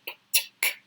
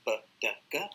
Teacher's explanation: First 3 are unvoiced because you don't use your vocal cord, p, t, k. But the last 3, b, d, g, you're using your vocal cord, so they are voiced.